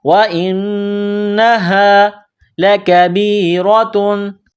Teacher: واو کو پڑھتے وقت ہونٹوں کو گول کرنا ہے، حمزہ کو نون کے ساتھ ملانا ہے، نون میں غنہ کرنا ہے، آواز ناک میں چھپانی ہے. یہ گول ہا ہے چشمے والی، صرف منہ سے ہوا نکالنے کی طرح اس کو پڑھا جاتا ہے